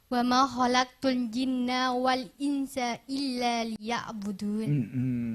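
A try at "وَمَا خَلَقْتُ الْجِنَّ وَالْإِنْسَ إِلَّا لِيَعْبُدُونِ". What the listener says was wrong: Sulit sekali ainnya ini ya.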